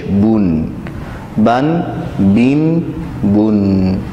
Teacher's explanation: تنوین دراصل علامات کی شکل میں لکھی ہوتی ہیں، یعنی دو زبر، دو زیر اور دو پیش کو تنوین کہتے ہیں، اور تنوین میں آخر میں نون ساکن کی آواز سنائی دیتی ہے، نون ساکن کا ساؤنڈ سنائی دیتا ہے تنوین کے آخر میں، جیسے با دو زبر بن، با دو زیر بن اور با دو پیش بن، بن بن بن، آخر میں نون کی آواز آئے گی۔